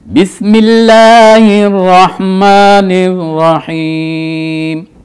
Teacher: تو یہاں لفظ بسم اللہ، لفظ اللہ کو باریک کر کے پڑھنا ہے